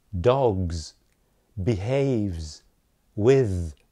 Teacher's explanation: they all end in voiced sounds voiced consonants